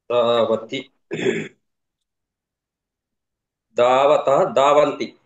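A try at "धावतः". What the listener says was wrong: Okay, మధ్యలో సరిగ్గా చెప్పట్లేదు మీరు. ధావతి కరెక్ట్ చెప్తున్నారు, ధావంతి చెప్తున్నారు, మధ్యలోది ద్వివచనం సరిగ్గా చెప్పట్లేదు. మళ్ళీ చెప్పండి. ధావతః. అలాగే ధావతః విసర్గ అనాలి.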